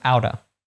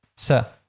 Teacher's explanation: All these words get reduced. So out of becomes outa, to becomes ta, so becomes se